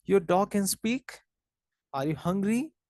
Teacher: describes how the voice Rises at the end of the sentence so generally this is common in yes or no questions as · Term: Rising intonation